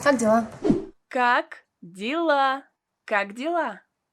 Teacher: a vowel ye is pronounced as e in this word because it is not stressed